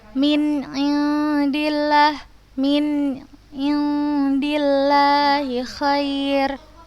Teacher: Maka kita membacanya samar. Jelas dulu yang ini nun bertemu ain, kemudian samar yang nun bertemu dal.